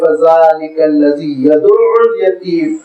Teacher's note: عین پہ تشدید اور بعد میں ضمہ کو کھینچنا نہیں، لمبا نہیں کرنا۔